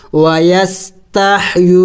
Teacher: या वाव पेशू, वाव मद्दा है, वाव साकिन है, उससे पहले पेश है, इसको वाव मद्दा कहते हैं और इसको एक अलिफ के मकदार लंबा करना होता है